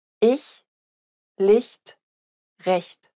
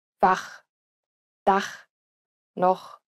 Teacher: The former is pronounced closer to the front of the mouth, while the latter is pronounced at the back of the mouth.